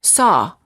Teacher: the lips are apart and very slightly rounded and they're oval in shape and the tongue is slightly tense